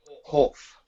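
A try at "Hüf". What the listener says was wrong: No. There is an umlaut over the U. So how you're pronouncing it is incorrect.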